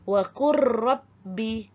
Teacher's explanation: Baik, pasangan huruf pada minggu lepas kita dah sentuh mengenai pasangan huruf idgham mutaqaribaini iaitu lam dan ra pada misal wa qul rabbi pada tulisan dan pada bacaan wa qur rabbi. Okey, kan seolah-olah ada dua ra kat situ pada sebutan